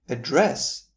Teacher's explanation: if you shift the stress to the second syllable of the word, making it address, you will be saying the verb